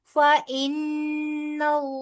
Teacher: नून मुशद्दद है लिहाजा गुना किया जाएगा · नून मुशद्दद है लिहाजा गुन्ना किया जाएगा और आगे इसमें जलालापुर पढ़ेंगे क्योंकि नून के ऊपर जबर है.